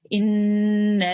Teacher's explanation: Noon mushaddad, you know that we have to do gunna here. We have to sit on it for 2 seconds. And just on the noon mushaddad here, we have a medium long stretch, a mad saghir, which will be prolonged for 2 to 4 seconds.